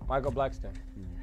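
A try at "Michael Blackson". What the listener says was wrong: Son, ain't no T in my name. You said Micheal Blackson or Blackson? There's no T.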